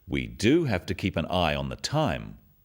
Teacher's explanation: Notice the emphasis on the word do